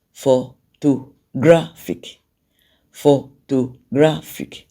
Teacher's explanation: the primary stress is on gra, because that's the loudest when you pronounce the word photographic